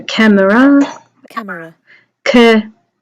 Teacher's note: There's a schwa there for the ER.